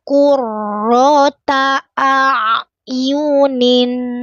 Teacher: ro berharakat fathah dibaca tebal terangkat pangkal lidahnya